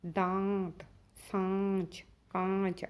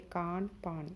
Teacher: वह स्वर जिनका उच्चारण नासिका और मुख से होता है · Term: सानुनासिक स्वर